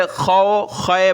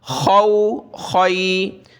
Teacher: اس کو بھی بہت سارے خو خے پڑھتے ہیں، خا یا زبر خے، خے نہیں پڑھنا، معروف پڑھنا ہے، خو خی۔ عین واو زبر عو، عین یا زبر عی، عو عی۔